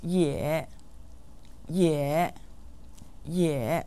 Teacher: lesson yeah meaning also or to is said with a third tone